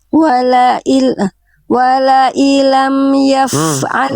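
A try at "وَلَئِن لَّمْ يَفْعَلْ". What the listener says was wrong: Wala illam ditasydidkan. Ya idgham biguna bila guna.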